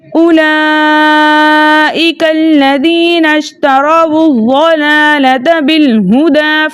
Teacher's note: دوبارہ الف مدہ آ رہا ہے تو اس لیے 2 حرکت کی مقدار کھینچ کر پڑھا جائے گا۔ الف مدہ 2 حرکت کی مقدار کھینچ کر پڑھا جائے گا